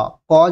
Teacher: ক যখন উচ্চারণ করছি এই ক এর সঙ্গে একটি অ উচ্চারণ হচ্ছে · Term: ব্যঞ্জনধ্বনি